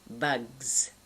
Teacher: You're doing a g, and now you're adding an s as though there were many bugs in the system, and you're doing a gz.